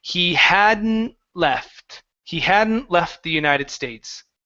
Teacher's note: when you have an N, T, and L, those kind of all mix together. And because of that, we're really going to leave out the T.